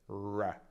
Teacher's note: la R inglese non è vibrante